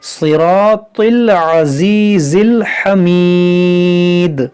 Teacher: یہاں پر دیکھیں سی، یہ صاد حروف مستعلیہ ہے، صراطل، یہاں صاد موٹا ہوگا، را بھی موٹا ہوگا، تو بھی موٹا ہوگا، صراط العزیز الحمید۔